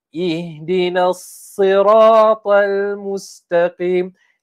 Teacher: antara sifat huruf sad ni adalah kita ni tebalkan namun tidak dimuncungkan